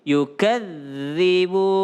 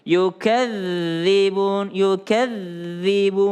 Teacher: Kalau ada zal bertasdid dia tekan dulu.